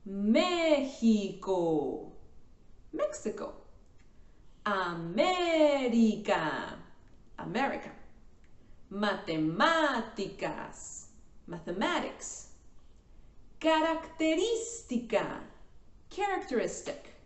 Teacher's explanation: These are the words that have the stressed syllable in the third to the last syllable or before.